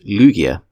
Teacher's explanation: In English, Lugia is typically pronounced Lugia with the emphasis on the first syllable. The name structure beginning with a liquid L and ending with a soft gives it a sense of fluidity and majesty fitting for a guardian of the seas.